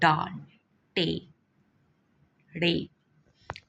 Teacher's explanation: माकूसी मुसम्मतें, ऐसे मुसम्मतें जिनकी अदायगी के वक्त ज़ुबान का फल उलट कर सख्त तालु को छुए